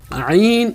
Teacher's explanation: ایک ہا تھا حلق کے درمیان سے اور عین حلق کے درمیان ہے، اس کی بھی آواز درمیانی ہے اور عین کی بھی آواز درمیانی ہے، اور درمیانی حلق سے ادا کریں گے۔ عین اس کی آواز درمیانی ہے اور درمیانی حلق سے ادا کریں گے